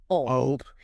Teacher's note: To make that L sound, your tongue has to release from the back and swing forward to tap right behind your top front teeth. So, you are physically moving from a retracted tongue to a forward tap.